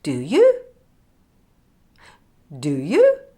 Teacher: the end like this do you there being more false and a slightly higher pitch on the word you · question because the speaker is unsure of what she's saying so the intonation goes up at the end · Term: question tag